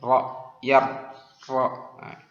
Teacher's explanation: Kalau huruf ro itu hanya 1 getaran lidah.